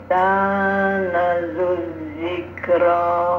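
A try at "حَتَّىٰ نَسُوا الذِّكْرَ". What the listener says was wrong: Jangan nazud tapi pakai sin. Hatta nazuzikr.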